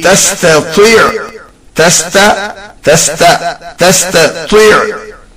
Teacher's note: Ta is pronounced thin and ta pronounced heavily.